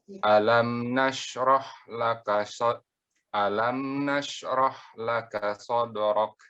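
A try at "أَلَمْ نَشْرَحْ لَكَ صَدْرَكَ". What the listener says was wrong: Sode, bukan sodo. Bukan sodorok, sode.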